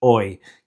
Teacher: the H in Spanish is always silent, so the pronunciation is hoy, without the H